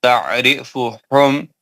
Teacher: عین حروف حلقی ہے وسطی حلق سے پڑھا جائے گا